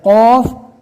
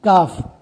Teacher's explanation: پھر قوف کے جیسا ہی آواز کا ایک کاف رہتا ہے، فرق اتنا ہے قوف کو پور اور کاف کو باریک پڑھا جاتا ہے